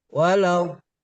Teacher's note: Dot itu di pinggir lidah ya?